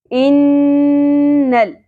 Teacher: نون کی آواز کو کھینچنا ہے، غنہ کرنا ہے، کیونکہ نون مشدد ہے۔ نون کے اوپر یا میم کے اوپر جب بھی تشدید ہوتی ہے تو ہم یہاں پہ غنہ کرتے ہیں، مطلب آواز کو کھینچتے ہیں۔